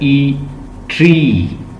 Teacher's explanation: ई ट्री, long vowel है, nearly close.